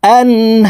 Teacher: আন এখানে গুন্নাহ ছাড়া পড়তে হবে, কারণ নুন সাকিনের পরে ইজহারের হরফ হা আসছে, এই কারণে এই নুন সাকিনকে গুন্নাহ ছাড়া স্পষ্ট করিয়া পড়ব।